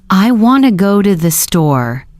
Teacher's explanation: Hear that the main stress is on want and store. The other words I to go to softer and quicker.